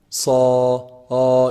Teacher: So if I say the alif with the sad, it's going to be heavy.